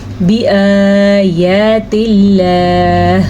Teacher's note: ہم نے اللہ کے نام کو باریک پڑھا ہے کیونکہ اللہ کے نام سے پہلے زیر آنے کی وجہ سے